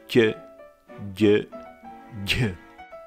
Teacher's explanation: Most scholars agree that there could have been also palatal plosives, pronounced with the central part of the tongue on the palate